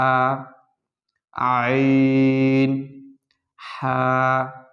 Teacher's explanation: হলকের মধ্যখান হইতে দুইটি হরফ উচ্চারিত হয় একটি হচ্ছে আইন দ্বিতীয়টি হচ্ছে হা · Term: দুই নং মাখরাজ